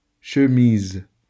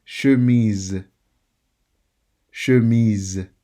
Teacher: The S is pronounced Z in this word because when you have an S between two vowels, it changes into a Z.